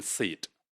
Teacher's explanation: the shortest vowel when it is found in a syllable which is closed with the voiceless consonant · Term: shortest possible form